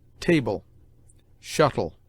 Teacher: LE, at the end of words, is pronounced like a weak EL, in which the E is almost mute, as table, shuttle.